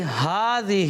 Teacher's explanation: کھڑا زبر کو ایک الف یعنی 2 حرکات کے برابر کھینچ کر پڑھا جاتا ہے